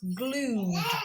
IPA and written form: gluːd (glued)